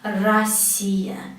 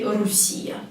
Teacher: we need to write o and we need to pronounce ah because o here is not stressed please don't say urusia please because everyone does that it's very